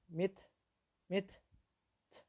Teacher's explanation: ketika disukun maka dia mengeluarkan suara yang disebut dengan sifat hams, mengeluarkan nafas yang disebut dengan hams, sifat hams.